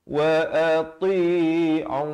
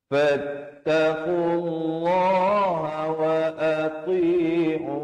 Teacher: Ain di pertengahan kerongkong dia waqafkan dengan ma'rid li sukun.